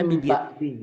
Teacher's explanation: Nggak diihfakan karena ini iklab, tapi mirip. Jadi jangan dominan engnya